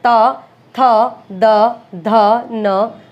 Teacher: जीवानीक यानी जीभ की जो नोक है वो दांतों को स्पर्श करेगी, ऊपरी दांत की पंक्ति का स्पर्श करती है, ठीक है। ये नहीं कि बिल्कुल दांतों के बीच में आ जाएगी, दांत जहां से शुरू होता है उस वाली पंक्ति को स्पर्श करती है। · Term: दंत्य